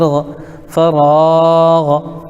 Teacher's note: غین کے اوپر زبر ہے، زبر کو جلدی پڑھیں، تھوڑا بھی نہ کھینچیں، زبر کی آواز اوپر کو اٹھتی ہے، جیسے غین زبر غ، فراغ۔